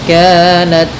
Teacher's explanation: mad asli kemudian kanat nah dalam ta sedikit dikasih hamz karena sifat ta ketika sukun Itu tampak hamznya